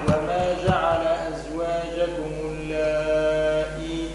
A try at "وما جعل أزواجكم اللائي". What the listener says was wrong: لا لا اللائي الهمزة ما هيش ممدودة اللائي تظهرون ما تمدش الهمزة